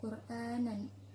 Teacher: roknya dibaca dengan tafkhim yaitu tebal karena didahului dengan harokat doma